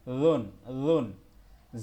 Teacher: আর রুন এটা একদম নরম হবে, জিব্বার আগা উপরে লাগবে